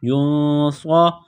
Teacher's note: صاد کو موٹا کرنا ہے، سیٹی کی آواز پیدا کرنی ہے